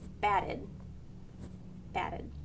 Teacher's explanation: If the root word ends with a t or a d, like bat, the past tense ed sounds like id, batted, batted.